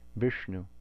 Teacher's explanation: the na following the shah is also cerebral · if we say Vishnu, this is a cerebral sibilant. So most of us are saying Vishnu incorrectly because we don't have this in English.